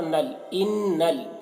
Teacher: ان نون مشدد غنہ ہوگا اور نون کو لام سے ملا کر پڑھیں گے، لام میں تشدید ہے، نون لام زبر نل، ان نل۔